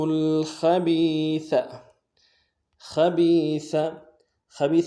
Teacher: خبیث میں خا کو موٹا ادا کریں گے، با کو یا کے ساتھ ملانا ہے، یا مدہ ایک الف مقدار میں کھینچیں گے، سا کو باریک ادا کریں گے۔